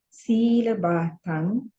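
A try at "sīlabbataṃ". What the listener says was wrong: Silabatang. Double B. Silabatang.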